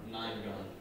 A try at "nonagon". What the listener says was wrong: Not nine. Non. It's like you can't pronounce it correctly.